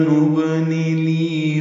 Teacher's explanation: با ساکن پہ قلقلہ ہے ، نون کے نیچے زیر جلدی پڑیں گے، لی یا مدہ